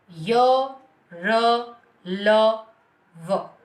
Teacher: इनका उच्चारण करते समय जीभ जो है उच्चारित करने वाले स्थान के पास पहुंच ही जाती है, लेकिन पूरी तरह से टकराती नहीं है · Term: अंतस्थ व्यंजन